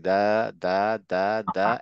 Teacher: যখন দা বলতে দা তখন গলায় একটা হালকা ভাইব্রেশন হয়